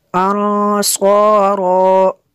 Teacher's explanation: نون ساکن کے بعد صاد حروف اخفا میں سے یہاں پہ بھی اخفا ہوگا، اس لیے یہاں پہ بھی غنہ کریں گے۔